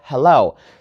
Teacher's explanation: the stress is on the second syllable, right? Hello, not hello.